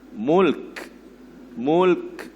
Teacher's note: Masa berhenti itu mulk, tuan-tuan kena anginkan kaf itu. Mulk, mulk, macam tu dia.